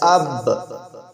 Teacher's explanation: با دونوں ہونٹوں کے گیلے حصے سے ادا ہوتا ہے